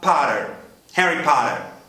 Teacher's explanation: Abrindo o som do O, levando quase para um A, transformando os T's em R e caprichando no R de Botucatu para acabar.